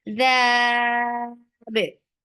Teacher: The bit. You're giving temporary sukun on ba because of the waqf, and this temporary sukun has turned this 2 counts long vowel into 4. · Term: mad arid lis sukun